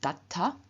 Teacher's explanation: in front of the ending ta, which begins with unvoiced t, we have the d again changing into a t